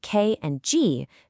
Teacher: And for K and G, the action is way in the back where the back of your tongue hits the soft roof of your mouth.